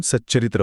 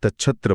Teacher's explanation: जेव्हा त पुढे च किंवा छ येतो, तेव्हा उच्चाराची जागा एकच करण्यासाठी तचा च होतो. उदाहरणे पाहिली तर सत आणि चरित्र मिळून सच्चरित्र होतो.